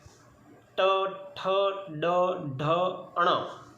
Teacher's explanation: तो जिह्वा का स्पर्श मूर्धा से होगा तभी यह शब्द हम बोल पाएंगे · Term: मूर्धन्य